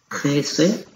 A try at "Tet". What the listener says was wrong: What this letter in the middle is not Samet. This is Tet. Tet.